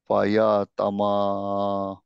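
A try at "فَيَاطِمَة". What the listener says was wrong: তাতেও একটা টান হবে, কারণ আলিফ আছে সামনে। গুড, এই ইয়াটা থাকলো না। মাসুদ ভাই খেয়াল করছেন, এই ইয়া কিন্তু উচ্চারণ করে নাই, শুধু আলিফ উচ্চারণ করছে।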